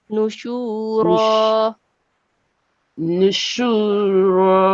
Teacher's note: just prolong the sound of sheen